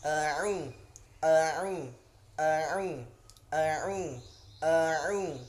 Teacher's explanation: Nah, yang kedua ini huruf ain ya. Huruf ain itu termasuk huruf halaq ya, termasuk huruf tenggorokan. Jadi agak ditekan sedikit ya sampai pangkal tenggorokan.